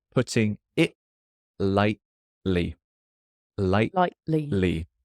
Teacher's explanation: The T in light also stops in my throat.